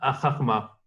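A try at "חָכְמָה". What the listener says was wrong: Oui, le kamatz. Ce kamatz-là, suivi du shva, il se prononce O.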